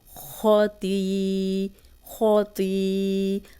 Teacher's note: خو کو موٹا پڑھیں گے، تو کو بھی موٹا پڑھیں گے